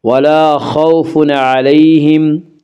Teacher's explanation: ولا خوف علیہم، یالین، یالین وہ یا جو ساکن ہو اس سے پہلے زبر ہو، یالین کو نرم آواز کے ساتھ جلدی پڑھیں گے